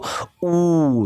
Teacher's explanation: ऊ को बोलोगे तो जो होगा ना ओष्ठ से एक गुफा बनेगा